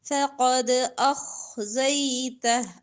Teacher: فقد قاف موٹا پڑھیں گے دال پر کلکلا ہوگا فقد أخزيته خا موٹا پڑھیں گے أخزيته